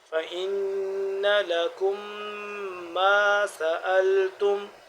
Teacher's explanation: نون مشدد آ گیا تو یہاں پہ ہم غنہ کریں گے